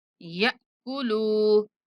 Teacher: یا کے بعد ساکن حمزہ آتا ہے تو جھٹکے کے ساتھ پڑھنا ہے ، یأکلوا، اور آخری لام کو کھینچ کے پڑھیں گے، اس